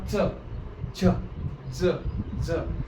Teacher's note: बोलताना आपली जीभ आपल्या टाळूला चिपकते. तर मूर्धन्य. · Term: तालव्य